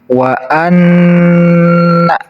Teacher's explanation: huruf gunah itu ada dua yaitu Nun dan mim yang ditasydid jadi cara bacanya harus ditahan dan ditekan dua harakat dari huruf nunnya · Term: huruf gunnah